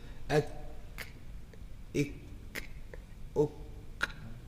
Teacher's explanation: due to the continuation of breath in the letter kaf and ta, we have that little release of gas or air, hams